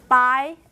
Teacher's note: when you're saying the by, die, and guy, it's just voiceless and aspirated